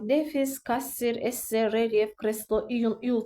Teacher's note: kreslo, iun, iul tipli sözlərdə vurğu ikinci hecanın üzərinə düşür